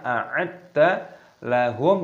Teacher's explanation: mim sukun bertemu dengan ain, hukumnya dibaca izhar syafawi, dibaca jelas, jangan didengungkan